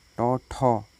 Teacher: टौ ठौ, सघोष नहीं है, अघोष है